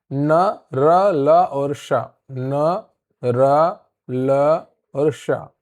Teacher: बोलते समय जीभ मसूड़ों को छूती है यानी कि वत्स को छूती है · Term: वत्स व्यंजन